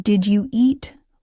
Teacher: Now imagine you're learning English and you hear someone say, "Did you eat?" It might sound like one strange word, but it's actually just did you eat linked together. The D in did connects to you and you connects to eat. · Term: linking